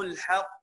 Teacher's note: القاف قلقله ايه؟ قلقله كبرى. ليه قلقله كبرى؟ لانه حرف مشدد موقوف عليه